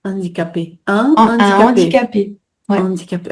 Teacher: Donc il y a un H, donc faut garder le H quand même, mais ça se prononce comme s'il était pas là